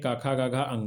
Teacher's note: काखा गाघा अंगा है। उच्चारण स्थान कंठ यानी गले के मुख्य भाग से, और इसको कहते हैं कंठ वर्ण।